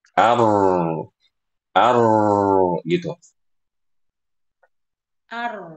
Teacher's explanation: Ar. Nah, jadi habis a langsung ujung lidahnya tuh naik ar. Ujung lidah naik ke makhraj huruf rnya ar.